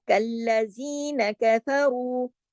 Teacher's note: कल्ला को हमने इसलिए सख्ती से जोड़ा क्योंकि उस पे तशदीद है